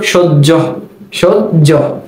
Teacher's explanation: হ এর সাথে যখন জফলা ব্যবহৃত হয় তখন এর উচ্চারণটা হয়ে যায় জয়ের মতো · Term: হ জফলা